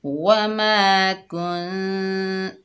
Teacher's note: اس میں نون کا کچھ حصہ ظاہر ہوتا ہے اور کچھ حصہ چھپا ہوا ہوتا ہے ، ٹھیک ہے، اس کو غنّے کی طرح نہیں کرتے، ٹھیک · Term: اقفا